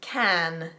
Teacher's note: do you hear how there's a bit of an aspiration there as well